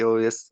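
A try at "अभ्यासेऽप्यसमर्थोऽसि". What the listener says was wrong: अभ्यास से ये जो एस लगा होता है ये अ होता है। अप्य समर्थो असी।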